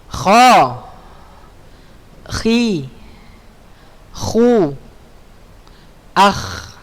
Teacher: Kha makharijul hurufnya di mana? Di tenggorokan atas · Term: huruf kha